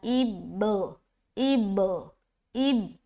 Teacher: حمزہ کو با سے ملایا اور پھر جدا کیا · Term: कलकला